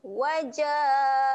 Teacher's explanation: ja panjangkan bunyi dia sebanyak 4 ataupun 5 rakaat